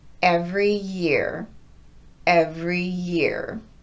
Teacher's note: So, if we take a phrase like every year, most of my students want to break their voicing between those two words, but native speakers link them together like this.